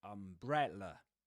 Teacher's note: However, the word umbrella is, the main accent on that word goes on the second syllable, bre